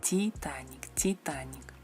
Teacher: La letra I, Titanic. El sonido I es más cerrado.